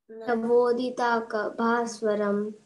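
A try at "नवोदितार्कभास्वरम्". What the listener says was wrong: Tarka. Okay, ta irka. Tarka, not darka, tarka.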